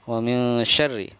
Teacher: Jadi ada suara eng ya ketika di antara nun sukun dan huruf shin. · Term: ikhfa